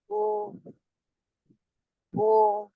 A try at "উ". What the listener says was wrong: না, এটা ও নয়, এটা হবে উ।